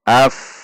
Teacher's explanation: Hamzah fathah masuk ke fa sukun. Af tidak tertahan.